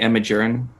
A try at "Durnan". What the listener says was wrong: It's Duran. There's an N after the R.